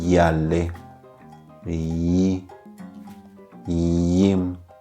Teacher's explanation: Tiene un sonido más suave, un sonido más alargado, como la I latina.